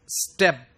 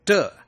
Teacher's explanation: It's aspirated sound. But when I come on to the word step, I pronounce it t. It is not aspirated, right?